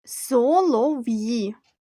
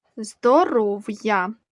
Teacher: приголосний звук в перед ї вимовляємо твердо